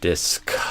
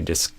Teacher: So, kind of a drier K sound without all that extra air coming out.